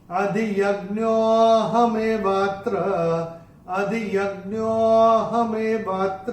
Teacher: तीसरे चरण में ये जो अवग्रह आ रहा है ज्ञो के बाद, तो ज्ञो को थोड़ा सा खींच के बोलेंगे जिससे कि जो विलुप्त अ है उसमें से वो निकल के बाहर आए